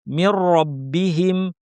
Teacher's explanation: মির রব্বিহিম শব্দে র তাসদিদ আছে, সাথে জবর আছে, পুরোটাই ভারী হবে। মির শুরু থেকেই ভারী।